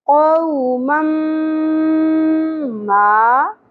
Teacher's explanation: قو, قوف کو پر کرتے ہوئے قو. مم, دو زبر تنوین کے بعد حروف یمنو میں سے میم مشدد آ گیا تو یہاں پر بھی ہم ادغام مع الغنہ کریں گے